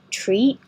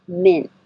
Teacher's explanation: you don't say either of the t's at the end